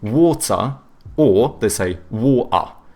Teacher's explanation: the British, they tend to have either hard T's or they do like the glottal T, so but then they do a schwa instead of pronouncing the R